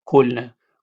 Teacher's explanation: O umlaut pronounced with round lips like English O